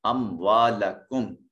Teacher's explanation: صفحہ میں محل مد کے بعد حمزہ اسی کلمہ میں ہے، مد متصل ہوگی، اموالکم۔ میم ساکن کے بعد نہ با ہے نہ میم ہے، لہٰذا میم کو ظاہر کر کے ادا کریں گے اور اس کو ادغام شفوی کا نام، اپنا اظہار شفوی کا نام دیں گے۔